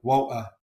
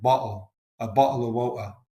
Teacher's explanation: So for London or Cockney English, water is more like woa. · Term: glottal stop